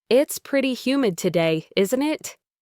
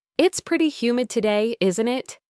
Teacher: They can have either a rising intonation when you're genuinely asking for confirmation and are unsure or a falling intonation when you're simply confirming something you believe to be true and expect agreement.